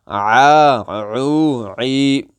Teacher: اس میں ہمارا جو ہے نا منہ کھلے گا اور اس کی آواز اس منہ کھلنے کے اندر جو خلا ہے، خالی حلا، اس میں سے اس کی آواز آئے گی اس طرح کر کے، اور اسی طرح اس عین کی جو آواز ہوگی وہ ہمارے گلے کے درمیان سے اس کی آواز آئے گی